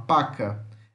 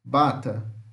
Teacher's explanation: Então, todas são consoantes, vejam os fonemas e as suas classificações e os exemplos. Então, o P é uma oclusiva bilabial surda e podemos pronunciá-la desta forma: paca.